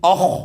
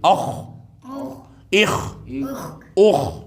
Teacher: خا ساکن آ رہا ہے تو خا کو پر پڑھا جاتا ہے